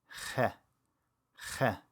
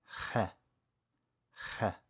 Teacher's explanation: It's made actually by constricting the airflow in the back of your throat, kind of like when you say the word aha, aha.